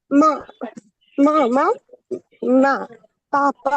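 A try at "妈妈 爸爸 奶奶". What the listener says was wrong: হ্যাঁ, চমৎকার, আপনি উচ্চারণগুলো চমৎকার আছে। নিউট্রাল টোনটা ঠিক আছে, ফার্স্ট টোনও ঠিক আছে।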